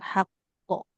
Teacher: huruf qof kan memantul ibu ya masuk huruf huruf qalqalah